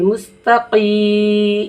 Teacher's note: زیر کے ساتھ یا لگ کر آیا ہے تو ہم اسے کیا کریں گے، کھینچ کر پڑھیں گے